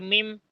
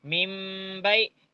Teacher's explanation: नून को मीम से बदल डाल के फुल गुन्ना इकफा के साथ करना, पढ़ना।